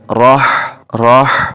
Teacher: ہا جو ہے یہ حروف حلقی میں سے ہے، اس کو جب ادا کرتے ہیں تو اس میں سانس کی آواز آتی ہے